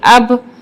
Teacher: حمزہ با زبر اب. اب یہاں پہ با حروف قلقلہ کا حرف ہے تو ہماری آواز پلٹ کر آئے گی.